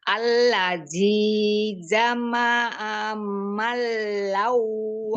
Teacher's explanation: Malau, manya mad, lamnya tidak tasdid.